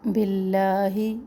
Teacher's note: اس پر جالہ کو باریک پڑھنا ہے کیونکہ لام سے پہلے با کے نیچے زیر ہے